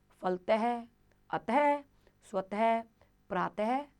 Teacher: तो बच्चों ये है विसर्ग, जिसे हम कहते हैं कॉलन, जिसमें पीछे 2 डॉट लगते हैं। इसका उच्चारण ह की तरह किया जाता है